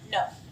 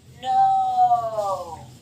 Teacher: you can have a quick o vowel no you can have a long o vowel